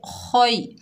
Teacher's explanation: खौ के ऊपर ज़बर है, आगे या साकिन है, खौ को या से मिलाएंगे। ये या लीन है, नरमी और जल्दी से अदा करेंगे। खौ को मोटा पढ़ेंगे खोई।